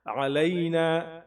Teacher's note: عین کو تھوڑا الف کے مقابلے میں موٹا پڑھنے کی کوشش کریں، حلق سے آواز نکالیں